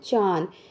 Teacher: अनुनासिक का प्रयोग करते समय मुख और नासिका दोनों से श्वास निकलता है।